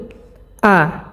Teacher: এই হামজাটা হলকের শুরু থেকে উচ্চারণ হবে এক নাম্বার মাখরাজ থেকে একেবারে স্পষ্টভাবে